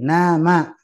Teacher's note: dia harus keluar dari hidung yaitu Nun dan mim